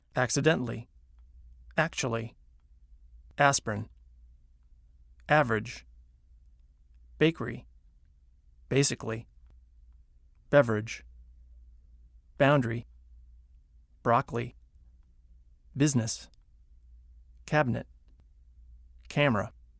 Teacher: Some longer words that are stressed on the first syllable squeeze weak syllables right out. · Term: Squeezed Out Syllables